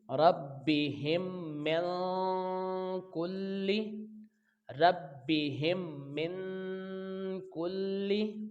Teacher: लंबाई गुन्ना की सूरत में एक अलिफ के बराबर होगी। काफ को लाम के साथ मिलाएंगे तो लाम दो बार पढ़ा जाएगा, लेकिन लाम के नीचे ज़ेर है तो इसको जल्दी अदा करेंगे।